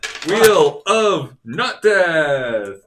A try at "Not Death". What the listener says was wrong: Now you said not death. It sounded like nut death.